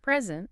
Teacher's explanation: If you stress the first syllable, Present. it's a noun, A noun. meaning a gift. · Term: word stress